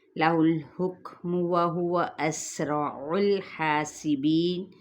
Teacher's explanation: اور جب میم اگر ریگولر آگے جائیں گے، لہ الحکم وہو اسرع الحاسبین، ان حرکات کو لمبا نہیں کریں گے، سین پہ سیٹی کو واضح کریں گے، ہا پہ الف مدہ کا قائم مقام ہے، بی پہ یائے مدہ، وقف کیا تو وقف بال اسکان۔